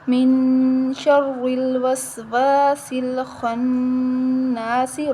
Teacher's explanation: سین کو سختی کے ساتھ ادا کریں گے ٹھیک ہے سیٹی والا حروف ہے · را کے نیچے زیر ہے تو ہم را کو باریک پڑھیں گے · خا کو موٹا پڑھیں گے نون مشدد ہے اس پر غنہ کریں گے